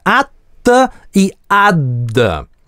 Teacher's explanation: звук [ð] здесь ассимилируется с соседним альвеолярным согласным и звучит как русское зубное [t̪] или [d̪]